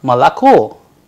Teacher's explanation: That is why it sounds like Ma-La-Ko. The stress falls on the last vowel, that is the O.